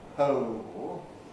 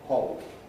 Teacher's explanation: The vowel starting point is attracted to the darkness of the L